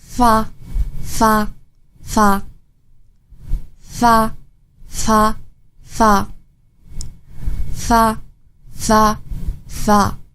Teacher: To make the F sound, touch the back of your lower lip to the bottom of the front upper teeth. F is an unvoiced sound, so you don't use your vocal cords.